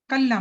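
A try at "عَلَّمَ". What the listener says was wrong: कलमा का है, ऐन है ये। अल्लामा। नहीं, अल्लामा। अल्लामा, उसने सिखाया।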